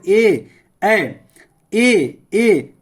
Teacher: से आवाज आ रहा है और तालू से ए ऐ ये कंठ और तालू से इसका आवाज आ रहा है